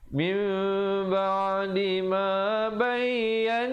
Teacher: didengungkan di situ nun sabdu 2 harakat